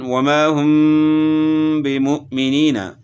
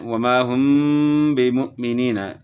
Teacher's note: میم ساکن کے بعد با ہے تو غنہ کے ساتھ اخفا کریں گے، اس کو اخفاء شفوی کہتے ہیں۔ مثلا وما هم بمؤمنین، یہاں میم ساکن کے بعد حرف با آ گیا ہے تو یہاں اخفاء کے ساتھ جو ہے نا ہم نے غنہ کرنا ہے، وما هم بمؤمنین، اور اس اخفاء کو اخفاء شفوی کہتے ہیں۔